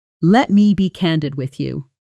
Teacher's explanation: Candid gets a firm, slightly heavier emphasis, almost like you're preparing the listener for something important. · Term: stress pattern